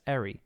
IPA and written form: -ɛɹi (-ary)